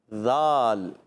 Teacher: ज़बान का सिरा और ऊपर के दांतों के अंदरूनी किनारे से अदा होता है